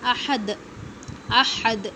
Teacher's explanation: تو آخری حرف پر جزم دے کر ہم سانس کو توڑ دیتے ہیں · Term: قلقلہ